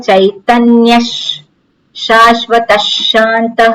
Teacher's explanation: વિસર્ગ પછી શકાર છે તો વિસર્ગનો અડધો શકાર થઈ જાય